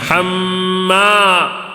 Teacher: الف سے پہلے زبر آیا ہے تو تھوڑا کھینچنا بھی ہے حما اس طرح کھینچنا ہے حما ٹھیک ہے اس کے بعد · حمام میں میم مشدد کا غنہ ہے وہ تھوڑا غنہ کر کے پڑھیں گے پھر الف سے پہلے زبر آیا ہے تو تھوڑا کھینچنا بھی